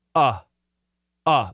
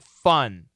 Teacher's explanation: it's a strong sound it's a downward sound and it's almost always short it's not stretched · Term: short u